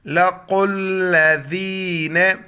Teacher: لَقُوا الَّذِينَ، ذین ذال کے وقت زبان باہر نکالیں گے